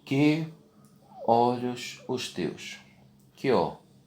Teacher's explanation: Você junta o I com o O. Ambos são átonos. Então eles vão se juntar e formam apenas uma sílaba.